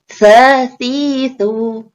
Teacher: Jadi makhrajnya antara ujung lidah dengan ujung gigi seri atas